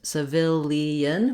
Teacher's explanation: and in civilian we still have the s sound but now this letter i says a vowel schwa the uh sound that's because it's an unstressed first syllable the vowel is reduced i can say it as civilian but